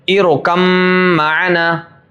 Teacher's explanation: اب دیکھیں با کا میم میں ادغام ہو رہا ہے